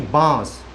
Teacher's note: बांस तो आ जो है वो लंबा खींचेगा